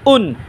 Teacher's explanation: হামজা উচ্চারণ হবে গলা শুরু হইতে